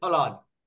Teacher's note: the ending vowel in pustaka, akara, is lengthened and ni, additionally, ni is added. That is pustakani.